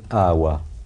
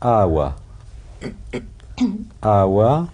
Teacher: non mais Alors, toutes les begades que pattes, quand il y a un point en dessous, ça veut dire qu'elles sont prononcées spirantes. Et le be spirantisé en syriaque oriental, c'est un we. Donc ça va se prononcer awa.